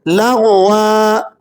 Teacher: غین زبر لاغ، واو دو زبر ون، لغون، لغون، وقفن لغوا، دو زبر پر جب آپ وقف کرتے ہیں تو اسے لمبا کر کے وقف کیا جاتا ہے ، اس لیے ہم اسے تھوڑا سا کھینچ کر پڑھ رہے